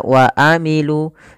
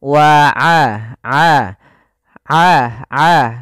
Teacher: Jangan dibaca wa amilu, tapi dia aa a aa dan hati-hati jangan sampai masuk kepada rongga hidung jangan wa aa a aa tapi dia wa aa a a a a a kalau kita pencet hidung kita itu suaranya tetap mengalir dan tidak berdengung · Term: sifat ainnya